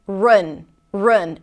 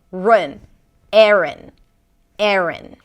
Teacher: an R sound, a schwa, and an N